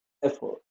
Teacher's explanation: Remember that the stress is on the first syllable F, not the second.